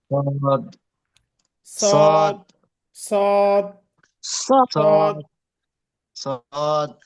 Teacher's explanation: সদ জিহ্বার আগা, সামনের নিচের দাঁতের আগা থেকে শীষ সহ মোটাভাবে আদায় হয়। صاد মোটাভাবে উচ্চারণ করতে হবে।